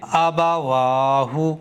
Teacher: حمزہ کو اور با کو اور ہا کو بالکل بھی نہیں کھینچا ہے، واو کو کھینچا ہے